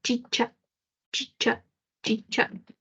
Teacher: una mezcla entre una oclusiva y una fricativa simultánea. La única que tenemos es la che. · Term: africada